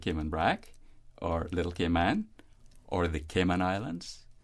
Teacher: when we couple it then with phrases like Cayman Brac Little Cayman or the Cayman Islands we tend to minimize that strong accentuation on the last syllable